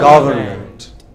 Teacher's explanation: break it into syllables and put the stress on the first